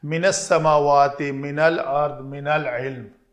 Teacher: من العلم میں بھی ایسے ہی ہے، من کا نون ساکن تھا، العلم یہاں پہ لام ساکن ہے تو اس من کے نون کو فتح دی